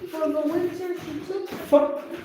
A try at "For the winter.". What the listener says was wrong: For the winter, you rest. See, full stop here now. For the winter. You don't do for the winter, no. For the winter, you rest. Because there is full stop here.